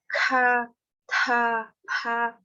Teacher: consoantes sopradas, que é essa que a gente tem que fazer com um sopro